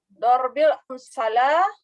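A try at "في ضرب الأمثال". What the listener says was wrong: amsa. Kenapa amsala? Ini lamnya kemana barisnya tuh? Fi dorbil Jadi li'anna fi dorbil amsali.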